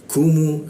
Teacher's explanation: Kita turunkan membaca ku itu sehingga rongga udara terbuka, dan huruf ku itu ada hembusan udara ketika membaca. Kumu, mu masuk ke dal ya, menggunakan ujung lidah ya, ditempelkan ke gigi.